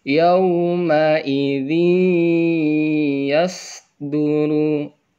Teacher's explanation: Nih, ada tanwin bertemu ya, maka suara tanwin ini dileburkan, dimasukkan kepada suara huruf ya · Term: idgham bi gunnah